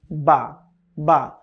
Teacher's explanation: খুবই সোজা দুই ঠোটের ভেজা জায়গা থেকে উচ্চারণ হবে · দুই ঠোঁটের ভেজা জায়গা থেকে উচ্চারণ হবে বা। বা দুই ঠোঁটের যে জায়গাটা সবসময় আমাদের জিহ্বার পানি দিয়ে ভেজা থাকে, সেখান থেকে উচ্চারণ হবে বা।